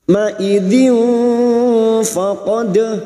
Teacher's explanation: kita samarkan bunyi kasr tanwin dan mendengung selama tiga harakat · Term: Ikfa Hakiki